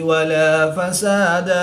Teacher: دال مشدد میں قلقلہ کبریٰ کریں گے، قلقلہ خوب جمعوں کے ساتھ کر کے پڑھیں گے۔